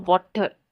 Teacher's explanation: In American English, the T sound between vowels is often pronounced as quick T sound, known as flap T.